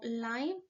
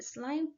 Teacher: omitió la consonante S al principio de la palabra